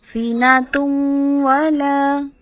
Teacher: अब सीनातुम ता की दो पेश थी, एक पेश जाइल हो गई और एक पेश को वाओ जज़म वाले के साथ मिलाया, ता पेश वाओ साकिन तो, सीनातुम। अब गुन्ना करना है तो आवाज तुम नाक में जाएगी, नाक में ठहरेगी, एक अलिफ बराबर खींचेंगे, लंबा करेंगे